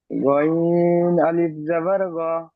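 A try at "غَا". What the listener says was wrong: আচ্ছা, এই গ বলে ছেড়ে দিচ্ছেন, এই জন্য আমি ইজরা করে আপনাকে বুঝালাম। কেননা ইজরাটা করলে আপনি বুঝতে পারবেন যে এখানে টান দিতে হয়।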